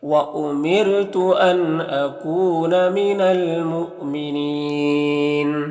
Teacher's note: یہاں پر حمزہ ساکنہ ہے واو کی شکل میں تو جھٹکا لگے گا